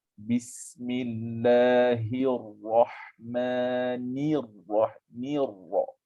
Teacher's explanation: Dia memang susah sikit daripada nipis nak masuk ke tebal. Kan nun baris kasrah itu dia nipis. Masuk kepada ra syaddah yang berfathah dia tebal.